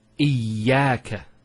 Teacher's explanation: Notice the ya gets a double vowel because of the shadda there. Iyaka. It's not iyaka, iyaka.